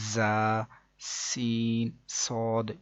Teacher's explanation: ان 3 حروف یعنی کہ زا، سین، صاد کو ادا کرتے وقت سیٹی کی طرح کی آواز نکلتی ہے، اس لیے ان حروف کو حروف صفیریہ یعنی سیٹی والے حروف بھی کہتے ہیں، جیسے کہ زا، سین، صاد۔